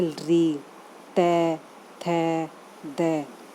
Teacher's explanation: ये बोलते वक्त जीभ दांत के टच होती है